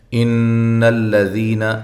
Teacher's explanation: وقف کی صورت میں آپ یہاں مد کر سکتے ہیں، اس کے بعد نون جو ہے وہ عارضی طور پہ ساکن ہو جائے گی وقف کی صورت میں۔ ان الذین، نون مشدد پہ غنہ ضروری ہے، حمزہ کو تحقیق کے ساتھ۔